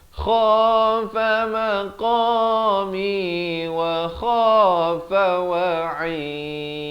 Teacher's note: Kha, saya beritahu di hujung kerongkong. Qa pula di pangkal lidah.